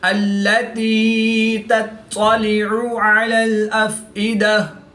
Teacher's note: عین کو حلق کے درمیان سے ادا کر کے پڑھیں گے، حمزہ کو حلق کے نیچے والے حصہ سے ادا کر کے پڑھیں گے۔